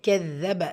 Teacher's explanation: கெதப தாலில் ஷத்தா இருக்குது, அழுத்தம் கொடுத்து ஓதணும்